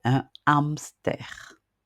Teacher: On entend plus la voyelle qui suit le H que le son même de la lettre H.